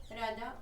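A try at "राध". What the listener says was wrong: Not Radha, Rod. Short A. Not Radha, that's Radharani. R-A-D-H. Short A, not long. Rod.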